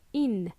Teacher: they will drop that G sound, G sound. So it doesn't sound like ing, but sounds like in.